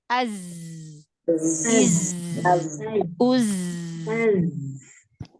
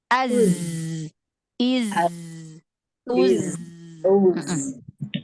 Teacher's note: Sofir, sifat sofir pada huruf zai itu seperti suara lebah. Seperti suara lebah.